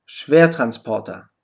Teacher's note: Beachte beim Wort Schwertransporter, dass das erste ER betont ist und R ausgesprochen wird. Am Ende steht das unbetonte ER mit der Aussprache A.